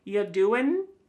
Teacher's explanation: Listen to that g at the end. Y doing. It's gone.